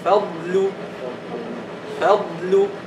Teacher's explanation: the sukun makes the istitala clearer.